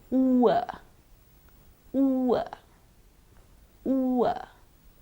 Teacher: this diphthong consists of an oo sound followed by a schwa sound